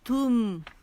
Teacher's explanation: تا پہ ہونٹ گول، میم پہ ان رول